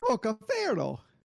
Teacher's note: You rolled the R a little bit.